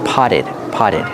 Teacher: the Double T is pronounced as a fast D